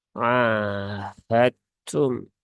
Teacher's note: karena Dal dengan ta itu dia satu makhraj yang sama ya tetapi ee sifatnya berbeda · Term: pertemuan mutajanisain